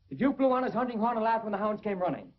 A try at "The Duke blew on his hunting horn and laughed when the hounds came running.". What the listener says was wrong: Please, not Duke. Duke. Not laugh. Laugh. Laugh. I want to hear those pear-shaped vowels. Pear-shaped.